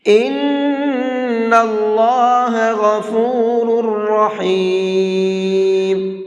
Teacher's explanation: اس نون کے اندر بھی غنہ کریں گے، اس لیے کہ نون کے اوپر تشدید ہے ، اور اللہ کے لام کو یہاں پر بھی منہ